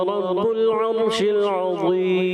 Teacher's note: یہاں را کو پر کرنا ہے, شین کی ادائیگی اور کلیئر کرنی ہے, اور ضا جو ہے آپ نے پر کرنا ہے